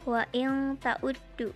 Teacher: Nun mati bertemu ta. Hukum tajwidnya ikhfa, dibacanya berdengung.